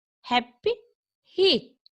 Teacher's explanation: And the sounds come far down the throat.